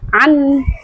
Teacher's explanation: Anh jelas dan tanpa dengung. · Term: izhar halqi